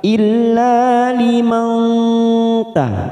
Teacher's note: nun sukun bertemu ta ikfa aqrab, kita samarkan 3 ketuk